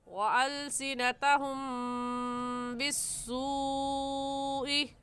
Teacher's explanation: ہم کی میم ساکن پر غنّہ کریں گے، کیونکہ میم ساکن کے بعد با آ گیا ہے، اور قاعدہ ہے کہ میم ساکن کے بعد با آ جائے تو میم ساکن پر غنّہ کرتے ہیں۔